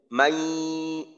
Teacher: আওয়াজটা নাক দিয়ে প্রকাশ করে করতে হবে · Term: গুন্না